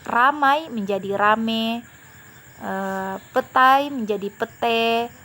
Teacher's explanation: monoftongisasi ini merupakan kebalikan dari diftongisasi jadi mendaftar misasi ini adalah perubahan bunyi vokal rangkap atau diftong menjadi bunyi vokal tunggal atau monoftong